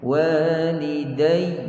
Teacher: Ada sabdu, waliday. Kita berhenti pada waw dan ya yang bersabdu, perlu naikkan sedikit suara kat situ. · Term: an-nabr